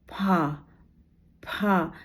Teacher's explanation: दोनों होठ पास आ रहे हैं और हवा उसको उसके रगड़ खा के बिल्कुल बाहर निकल रही। फ ग तो यहां पर केवल अवयवों का अवयवों के स्पर्श से या संघर्ष करते हुए जब वायु निकल रही है और व्यंजन का उच्चारण हो रहा है तो उसको हमने संघर्षी व्यंजन कहा।